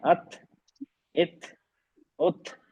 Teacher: हर्फ बारीक है और इसमें हम्स है, इसमें सांस जारी रहती है।